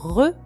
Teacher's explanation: re uvulaire français, produit par la luette